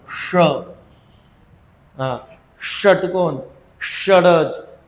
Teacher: जिभेचा शेंडा मुडपला पाहिजे त्याचा मुर्धा करा कारण ते मूर्धन्य वर्ण आहे